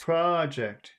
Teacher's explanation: it is noun, so it is on the first syllable.